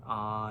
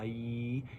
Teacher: think about the difference between ah, with your tongue nice and low, and when you say e, and the back of your tongue goes up and touches your back teeth, e.